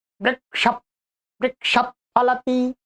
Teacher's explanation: अपने आप ओष्ठ वाला वर्ग आ रहा है तो अपने आप विसर्ग ओष्ठ से युक्त हो जाएगा